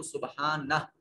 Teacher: وقف کی حالت میں ہا کو پڑھیں گے اور ہا کی حرکت کو نہیں پڑھیں گے. سبحانہ کو سبحانہ کر کے پڑھیں گے.